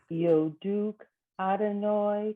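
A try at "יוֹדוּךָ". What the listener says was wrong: yoducha. You left off the last. Okay, yoducha.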